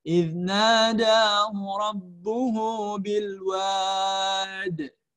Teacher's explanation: qalqalah kubra atau qalqalah yang pantulannya besar ya. Itu tandanya dia berada di akhir ayat atau berada di akhir kalimat yang sifatnya yang ada tanda wakafnya.